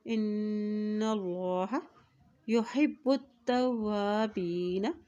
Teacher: जब नून के पश्चात आ जाती है तो वहाँ पर गुन्ना अदा किया जाता है, और अल्लाह के नाम से पहले ज़बर आ गया तो अल्लाह का नाम भी यहाँ पर मोटा अदा किया जाएगा